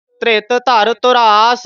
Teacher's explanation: ਧੁਰਾਸ ਔਂਕੜ ਨਾਲ ਧੂਰਾਸ ਨਹੀਂ ਬੋਲਣਾ